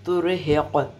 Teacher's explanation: قاف کے اوپر کلکلا کرتے